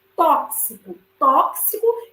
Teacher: eu tenho um X, que ele é um dífono, porque ele vai ter o som aí de KS.